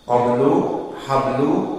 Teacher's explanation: Maka ba di sini qalqalah, namun qalqalah sughra